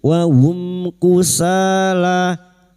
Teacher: Illa wa hum mim sukun bertemu kaf idhar safawi. Mim sukun dibaca jelas tanpa mendengung.